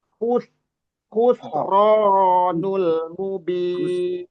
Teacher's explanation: khonya yang kasar, yang terdengar tebal karena punya sifat isti'la. Namun sinnya enggak, nah sinnya enggak ikut tebal karena sin biasa s ya.